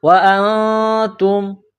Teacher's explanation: نون ساکن کے بعد تا ہے، حروف اخفا ہے تو غنہ کریں گے۔